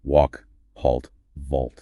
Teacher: To prepare for that L sound, your tongue starts arching back towards your throat earlier. It narrows the airway, so you get that rounded darker sound. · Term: broad A